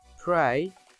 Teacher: /r/ after /p, t, k/ becomes voiceless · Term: Voiceless /r/ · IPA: /preɪ/